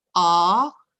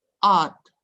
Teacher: A, rising tone, becomes art, falling tone.